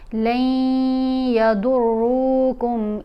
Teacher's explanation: आवाज़ नाक में जाएगी और हमने उसको थोड़ी देर होल्ड करके रखना है वहाँ पर। · हमने लाम को या से मिलाना है तो गुन्ना करते हुए